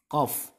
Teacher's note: Sifat isti'la ini maksudnya adalah terangkat lidahnya. Ciri isti'la terangkat lidahnya. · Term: huruf isti'la